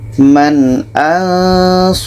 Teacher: izhar halq jadi Nun jelas Hamzah jelas kita baca Man an Nun jelas Hamzah jelas dan tidak ada dengung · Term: izhar halqi